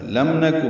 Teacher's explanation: میم ساکن پہ اظہار شفوی، نون کو جلدی پڑھنا ہے، کاف کو معروف طریقے سے جلدی پڑھنا ہے